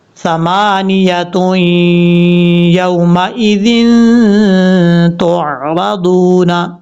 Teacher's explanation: یہاں پر 2 پیش کی تنوین کے بعد جب بھی یا آ جائے وہاں پہ غنہ کیا جائے گا۔